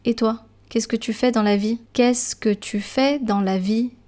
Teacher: you hear me going up when I ask a question in French · For questions, for example, the last syllable will actually be pronounced a bit higher up in tone.